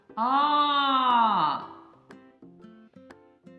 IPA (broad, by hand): А